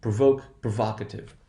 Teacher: notice there is no shift in the position of accent